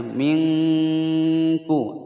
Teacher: dengungnya terasa di Pangkal lidah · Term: ikhfanya